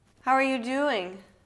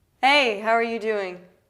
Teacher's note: the how are you is really short, and the doing is long